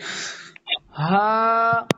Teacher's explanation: اب یہ بڑی ہا ہے جو کہ حلق کے نیچے والے حصے سے ادا ہوگی، یعنی کہ پیٹ سے ہم نکالیں گے اس آواز کو زور دے کے